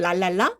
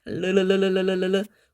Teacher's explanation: 공기가 혀의 양옆으로 싹 흐르면서 아주 뭔가 흥겹고 부드러운 느낌을 주는 게 바로 리을 자음이라고 보시면 되겠습니다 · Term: 유음